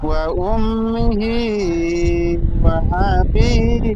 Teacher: ওয়া আ বলে হামজার উপর জাবার আছে, হারাকাত টান হবে না